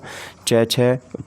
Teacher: च वर्ग पूरा का पूरा तालु से बोला जाता है, ये आपको याद रखना है।